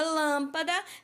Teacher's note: eu pronuncio a sílaba Lan com mais tonicidade com mais força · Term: proparoxítona